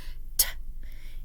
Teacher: T is an alveolar sound, meaning that the place that it's produced is behind your teeth. So t, so your tongue comes up and says t.